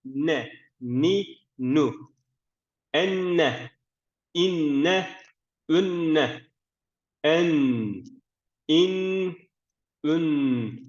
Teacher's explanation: dil ucumuz üst ön Diş etlerine değmesi gerekiyor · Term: nun